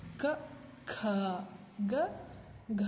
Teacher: ಇಲ್ಲಿ ಮೊದಲನೇ ಅಕ್ಷರಕ್ಕೆ ಹೆಚ್ಚು ಉಸಿರನ್ನ ನಾನು ಬಿಟ್ಟಿಲ್ಲ, ಎರಡನೇದಕ್ಕೆ ಹೆಚ್ಚು ಉಸಿರನ್ನ ಬಳಸಿ ನಾವು ಪ್ರೊನೌನ್ಸ್ ಮಾಡ್ತೀವಿ. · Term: ಮಹಾಪ್ರಾಣ ಅಕ್ಷರಗಳು